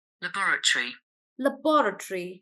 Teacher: I'm playing the British pronunciation first laboratory laboratory so they are stressing on B · So they are stressing on bo.